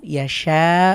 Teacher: এখানে মাদের হরফ এর পরে গোল হামজা এসেছে এটাকে মাদ্দে মুত্তাসিল চার আলিফ টেনে পড়তে হবে